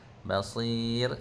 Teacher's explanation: Basir ra tu kena baca nipis · Basir ra tu nak baca nipis, dan kita kena senyum dah sekali, bukan muncul mulut. Basir kalau muncul jadi tebal.